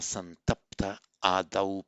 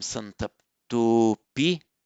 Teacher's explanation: because it's followed by a vowel other than a short a, all that happens is the visarga drops, and that's why it gives us santapta adau.